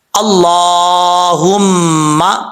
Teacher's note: اللہ کے لام سے پہلے زبر ہو تو اللہ کا لام پر پڑھا جاتا ہے، یعنی موٹا پڑھا جاتا ہے